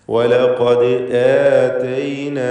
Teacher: ദാലിൻ്റെ സുക്കൂൻ ഖൽഖല സൂറ നൽകി ശബ്ദം ചലിപ്പിക്കണം.